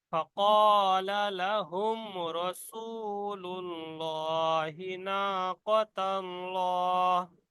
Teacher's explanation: মিম সাকিনের পরে র এসছে, বিনা গুন্না পড়তে হবে